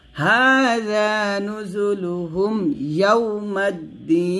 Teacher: হাযা জালটা জিহ্বার আগা উপরে দাঁতের আগার সাথে লাগিয়ে পাতলা করে উচ্চারণ করবেন